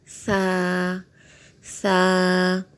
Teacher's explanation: سا، سا، سا کا مخرج یہ ہے کہ زبان کی نوک سامنے والے اوپر کے دانتوں کے کنارے سے لگے تو سا ادا ہوتا ہے